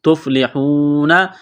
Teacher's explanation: واو ساکن سے پہلے پیش ہے، حروف مدہ واو ہے، ایک الف کے لمٹ میں کھینچنا ہے